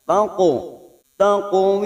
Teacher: Ahsani taqo ada huruf qaf. Huruf qaf ini qalqalah yang dibaca tebal karena huruf qaf adalah termasuk huruf isti'la. Maka cara memantulkannya berbeda dengan huruf yang lain.